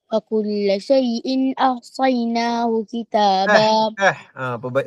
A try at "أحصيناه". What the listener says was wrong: Perbaiki ya huruf ha. Wa kulla syai'in ahsayna.